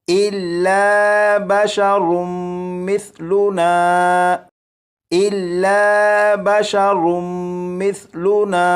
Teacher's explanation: یہاں پر دیکھیں یہ میم مشدد ہے، میم مشدد پر غنہ کریں گے، میم کے بعد سا ہے، سا کو نرمی سے پڑھیں گے۔